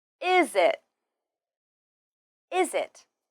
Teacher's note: we often link the final z sound of is with the beginning I sound of it